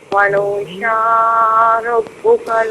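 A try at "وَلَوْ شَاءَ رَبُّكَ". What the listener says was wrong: ولو شاء، حمزہ کو پڑھیے نا، اس کی آواز واضح ہونی چاہیے۔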